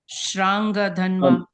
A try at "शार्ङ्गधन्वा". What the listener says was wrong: No, you are saying Shra. It is Sharanga. Sharanga. Sharanga.